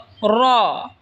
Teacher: র জিহ্বার আগার পিঠ তার বরাবর ওপরে তালের সঙ্গে লাগায় উচ্চারণ হবে র।